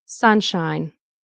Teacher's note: Sun is the stress.